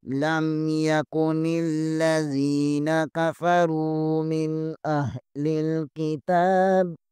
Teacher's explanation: یہاں پر نون ساکن کے بعد حمزہ حروف حلقی میں سے ہے، یہاں غنہ نہیں اظہار ہوگا